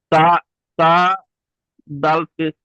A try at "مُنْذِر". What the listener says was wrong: তা এখানে নেই ভাই, তা কোথায় আছে দেখেন তো, তার উপরে দুটো নোক্তা হয়। এটা জাল, জাল জের জি।